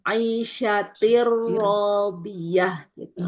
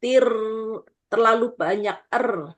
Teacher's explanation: Jadi tirnya Bu, er-nya itu dikurangi sifat takrirnya. Jadi sifat er-nya jangan kebanyakan.